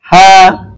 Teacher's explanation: কণ্ঠনালীর শুরু হতে উচ্চারণ করতে হয় হা। একেবারে আপনি স্বাভাবিকভাবে দম ছাড়েন যেভাবে, এভাবে একটু শব্দ করে ছাড়লে হ্যাঁ উচ্চারণটা খুব স্বাভাবিক হয়ে যায়।